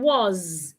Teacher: in the word was the S sounds like a z